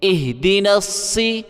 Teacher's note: دال کو جلدی پڑھنا ہے، دال کو کھینچنا نہیں ہے